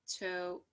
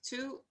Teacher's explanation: alveolar like a tip of the tongue and an alveolar ridge